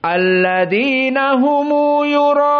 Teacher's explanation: qiraah Abu Ja'far dan Ibnu Katsir maka dengan silatul mim